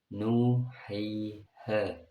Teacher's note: Mad tabi'i contohnya lafaz nuhiha, karena wawu jatuh setelah dhammahnya, huruf ya-nya jatuh setelahnya kasroh, huruf alif jatuh setelahnya fathah. Mad tabi'i panjangnya 2 harokat atau 1 alif